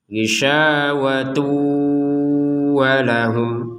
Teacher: namanya idgham bi gunnah, masuk dengan dengung. Kalau bacanya isyawatu walahum berarti cuma idgham saja, nggak ada gunnahnya.